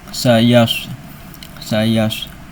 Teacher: Shad punya sifat sofier artinya ada siulan atau desisan.